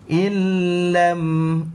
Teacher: Illam dimasukkan nun ke dalam lam tapi tidak ada dengung. Nun dimasukkan ke dalam lam tanpa ada dengung. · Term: idgham bila gunnah